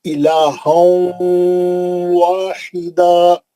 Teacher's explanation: نون کو لے کے واو میں جائیں گے اور غننے سے پڑھیں گے. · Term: ادغام مع الغنہ